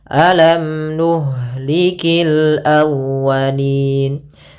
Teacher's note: izhar berarti mimnya jelas tidak boleh ditahan tidak boleh alam nuhliki tinggak tapi langsung saja alam nuhlikil aalin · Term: izhar syafawi